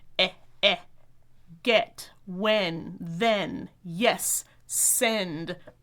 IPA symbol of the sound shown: ɛ